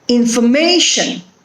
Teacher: It is on the third syllable, that is may. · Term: stress